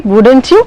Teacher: So that wouldn't you, that ending of the tag question, that is what you call it as the rising intonation